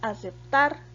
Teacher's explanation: tiene el acento en la última sílaba, por lo cual es una palabra aguda.